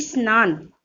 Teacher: सा के पहले ई का साउंड आता है।